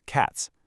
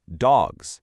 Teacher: the G in dog naturally vibrates your vocal cords, which physically forces the S to vibrate, too. So, the morphological requirement to make the word plural is completely governed by the funological rule of voicing assimilation. · But if you have more than one dog, you still add an S, but it magically turns into this buzzing Z sound